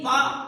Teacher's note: पा में जितने भी वर्ण आते हैं इनको आप बिना किसी भी प्रकार के होठों को बिना मिलाए आप नहीं बोल सकते, इसीलिए इनका नाम होस्ट में आता है। · अब पा को आप बिना होठ के मिलाए उच्चारण कर ही नहीं सकते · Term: होष्ठ